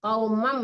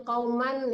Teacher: itu iqlab hukumnya, jadi ditekannya ke mim